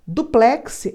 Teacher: duplex é uma palavra oxítona a última sílaba é mais forte